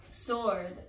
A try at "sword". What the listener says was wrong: Sword. Where is the W? Mine is sword. Sword.